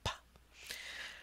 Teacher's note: stop the air in your mouth with your lips and then pop it open with the top lip /p/.